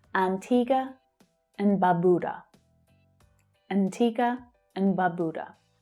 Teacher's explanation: The and is reduced to n, Antigua, Barbuda. So there are two long vowel sounds here, ba and boo. But it's the second one that's stressed, so it's pronounced a little more strongly, a little clearer.